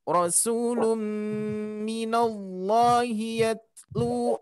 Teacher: Tanwin bertemu mim bertasdid, idgham bi gunnah harus kita tahan